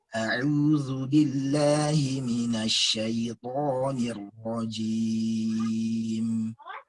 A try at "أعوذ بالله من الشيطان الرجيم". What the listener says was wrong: Zalnya nggak usah ada istitolahnya, Ustaz. Tahu nggak istitolah itu gimana? Pemanjang makhraj. Jadi kalau a'udzu billahi itu istitolah namanya. A'udzu, cukup ujung bibirnya aja yang gerak. Nah, jangan terlalu kuat. Jadi irja'nya itu jangan terlalu, ain itu dia kan huruf tipis. Zal dia huruf tipis ya.